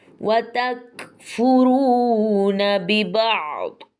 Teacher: وَتَكْفُرُونَ بِبَعْض، وَتَكْفُرُونَ کاف میں اس چیز کی آواز آئے گی تھوڑی سی، اور را کو ہم نے پر پڑھنا ہے اور تھوڑا سا لمبا بھی کرنا ہے چونکہ واو مدہ ہے